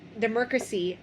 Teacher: in the word democracy, he adds more Rs than are needed. He says democracy.